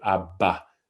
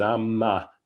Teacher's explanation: You get that ma in Sanskrit is that word, and then abba, you get that plosive abba, and it's interesting because abba has to stop the flow of the breath, whereas amma doesn't